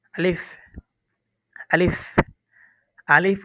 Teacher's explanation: আলিফ উচ্চারণ করতে কোনো টান হবে না। এটা দ্রুত বলতে হবে।